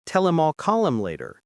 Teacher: The H in him drops out completely.